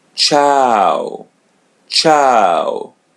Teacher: the U or U comes in the end, so pronounce it as W